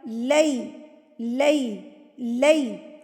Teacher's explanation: یا کی ساؤنڈ ہے ڈبل ای اور زبر کی ساؤنڈ ہے ڈبل اے، تو آپ نے ڈبل اے کو ڈبل ای سے ملانا ہے · جب یا ساکن سے پہلے زبر آ جاتی ہے نا تو لفظ پڑھا جاتا ہے لئی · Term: یا لین